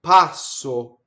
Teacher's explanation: Notice how I carefully did the double S. I didn't do it too hissy and early.